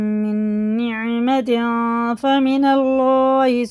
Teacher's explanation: اس نون کی آواز کو ناک میں لے جا کے ایک الف کے برابر پڑھیں گے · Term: اخفا